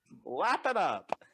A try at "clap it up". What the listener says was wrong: Clap, clap, clap, clap, clap, not lap. Clap.